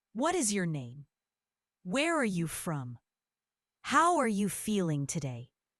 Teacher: Notice the tone. It goes up at the end, showing curiosity and interest.